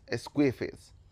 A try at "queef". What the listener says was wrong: No, it's queef, not squeefy.